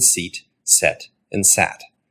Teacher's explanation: your tongue starts up high e goes to the middle of your mouth e and then goes down to a